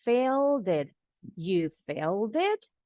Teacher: Failed ini akhirannya D. Jadi bunyi D-nya disambung ke bunyi I.